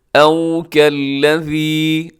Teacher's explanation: او میں واو لین ہے، اسے آپ نے مجہول نہیں پڑھنا بلکہ معروف پڑھنا ہے